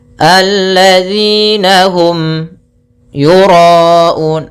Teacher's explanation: Alladzina hum yura'un, ada mim mati bertemu ya, kita namakan dengan bacaan izhar syafawi, yaitu suara mimnya harus dibaca dengan jelas tanpa ditahan. Yura'un, ro-nya tebal, ro tafkhim.